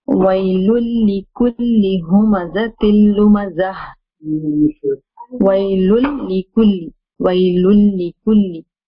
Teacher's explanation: The lam is completely very clear. No ghunna. The tanween is merging into the lam sound. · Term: idgham